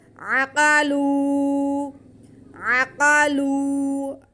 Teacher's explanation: عین پہ زبر، قاف پہ زبر، لام پہ پیش اور ساتھ میں واو ساکن، یہ واو مدہ ہو گیا۔ لام کے بعد کو ہم کھینچ لیں گے۔ عقلو، عقلو، آگے ہا پہ پیش ہے، اسے بالکل نہیں کھینچنا.